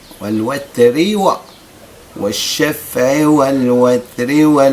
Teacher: الراء مفخمة في حالة الوقف. في حالة الوصل تصبح مرققة.